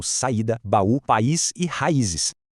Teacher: Quando i ou u ficam ali isolados em uma sílaba, sozinhos ou no máximo acompanhados da letra S, eles ganham um acento. Na nossa própria pronúncia, a gente já separa essas vogais dando um super destaque para elas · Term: iatos